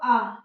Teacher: तो आ और आ ये कहाँ से निकलता है, आ बोल कर देखिए कि आ और आ कहाँ से निकल रहा है, कंठ से निकल रहा है